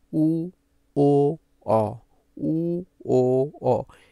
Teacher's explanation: উ, ও, অ উচ্চারণ করলে দেখবা তোমার জিহ্বাটা একদম, একদম পিছে চলে গেছে, পিছনে, মানে এর থেকে পেছনে যাওয়া সম্ভব নয়। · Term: পশ্চাৎ